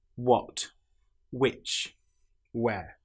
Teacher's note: In these cases, the H sound doesn't exist.